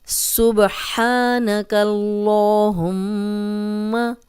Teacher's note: میم پہ شد ہے تو غنہ کریں گے اور میم کی جو زبر ہے اس کو لمبا ہونے سے بچائیں گے